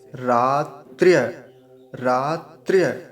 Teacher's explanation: रात्र्य यानी त भी बहुत जल्दी से बोला जाएगा और रेफ भी